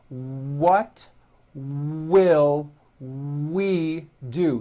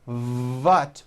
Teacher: it's never a v sound where you are like biting down on your lower lip